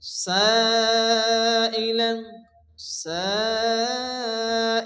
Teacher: হরফে মাদ্দার পরে হামজা একই শব্দের মধ্যে আসছে এজন্য এখানে মধ্যে মুত্তাসিল হবে এবং চার আলিফ পরিমাণ টান দিয়ে পড়তে হবে